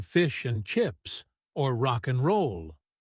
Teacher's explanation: Even the word and frequently shrinks down to just n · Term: reduction